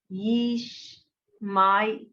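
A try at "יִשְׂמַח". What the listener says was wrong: Not my, just me. Me. Yeesh, me. ish. No, it's not a shin. It's a sin. That's on the left.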